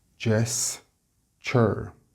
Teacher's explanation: Notice the ch sound on the TU, gesture.